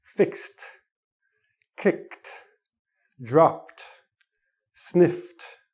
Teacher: When a word ends in the S sound, the last letter is an S or an X in this case, then the D sounds like a T. Again, hard to switch the tongue in time to get the D sound. We get the T. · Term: T sound